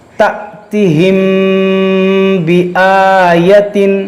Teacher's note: اور یہاں پر دیکھیے میم ساکن ہے اور میم ساکن کے بعد با ہے، تو یہاں پر اخفاء شفوی کا قاعدہ لگے گا، یعنی کہ یہاں پر غنہ کریں گے